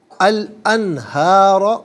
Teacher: انہارہ میں نون ساکن ہے، اس کے بعد حرف حلقی ہا آ رہا ہے، تو یہاں نون ساکن پر اظہار کریں گے، اخفا یا غنہ نہیں کیا جائے گا